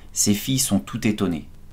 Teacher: Tu as dû remarquer qu'on fait la liaison dans la phrase « ces filles sont toutes étonnées ». Tout, même s'il est invariable, se prononce toutes, car il y a une voyelle après, et ça tombe bien car la phrase est au féminin.